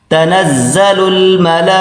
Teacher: لام کے اوپر کھڑا ہے اور مد بھی ہے، تو اس کو 4 الف کی مقدار کھینچ کر پڑھیں